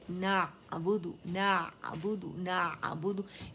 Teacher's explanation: ना अबुदू, ना अबुदू, ना अबुदू, इसमें आवाज़ आपकी शिद्दा नहीं पैदा होना चाहिए, आवाज़ बंद नहीं होगी, कटेगी नहीं, याद रखिएगा, जारी रहेगी, तवस्सुत है, ज़बान के दरमियानी हिस्से तक कम से कम आवाज़ चलनी चाहिए, क्योंकि तवस्सुत है इसमें, ठीक है।